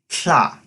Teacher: its usage of this voiceless alveolar lateral affricate the sound sounds like cha and the volcano's name is a